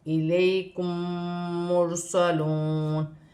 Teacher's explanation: میم ساکن کے بعد میم مشدد ہے، اس میں غنہ بھی کیا جائے گا میم ساکن میں، اور یہاں پر را کو موٹی پڑھا جائے گا کیونکہ پیش ہے را ساکن سے پہلے، اور یہاں پر واو ساکن سے پہلے پیش ہے تو واو مدہ بنے گی، اور واو کی صورت میں زبر گر جائے گی اور نون ساکن ہو جائے گی۔